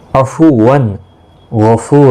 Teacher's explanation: عفوا، وان نہیں کرنا ہے، یعنی کہ تنوین کے بعد حروف حلقی کا غائن آئے، اس لیے یہاں پر اظہار ہوگا، غنہ نہیں ہوگا